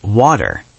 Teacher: >> Oh, the T is a very strange letter in English, especially in American and Canadian accents, >> right? If the T is between two vowels, it often sounds like a soft D. We call this the flap T.